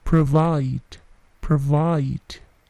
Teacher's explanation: Perhatikan bunyi plosifnya, P tidak terlalu besar, bukan provide, tetapi provide, provide.